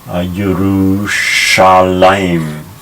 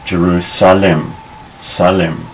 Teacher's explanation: It has the sh sound, but in English, even though we have the sh sound in English, we just make it an s.